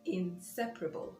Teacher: so the stress is on the second syllable